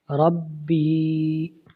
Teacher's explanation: را با زبر رب، با یا زیر بی، یہ یا مدہ ہے، اس کو ہم ایک الف لمبا کریں گے